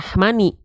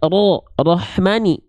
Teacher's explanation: Karena huruf ro harus dibaca dengan keadaan yang tebal di sini.